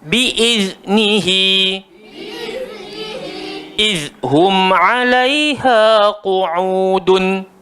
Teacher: Sekali lagi kena gigit lidah, huruf zal.